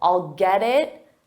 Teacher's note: Because we have a T and it's between 2 vowels, so we'll pronounce that T as a soft D, but you have to connect the sounds together.